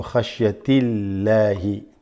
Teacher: If a kasra is before the name of Allah, you read the name of Allah light. You don't say Allahi, you say Illahi.